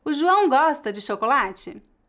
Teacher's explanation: a entonação da pergunta sobe um pouco no final